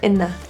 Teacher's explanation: Here's another great example of in-a, where the N slides over